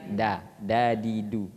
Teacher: makhrajnya ujung lidah dengan tengah langit-langit